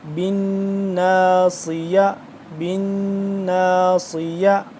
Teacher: صاد کو سختی سے اور سیٹی کی آواز اور موٹا کر کے